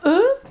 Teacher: Pour faire “eu”, la langue touche les dents. On va mettre la bouche comme ça en arrondi.